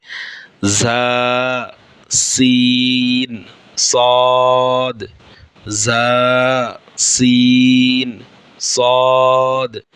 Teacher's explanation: জিহ্বার আগা সামনের নিচের দুই দাঁতের গোড়ার সঙ্গে লাগাইয়া সদ, সিন, জা, এই 3টি হরফ উচ্চারিত হয়।